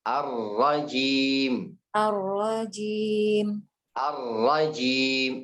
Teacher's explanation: Habis ra langsung ke jim. Ya, nggak ada panjang.